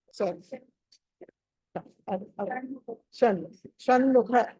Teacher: ష క్ష నాలిక మడత పడాలి వెనకాల క్ష అది మీకు మీకే తెలుస్తుంది ష అంటే అది నాలుక కొంచెం వెనకాలకి ఇలా ఇలా తిరగాలి వెనకాలకి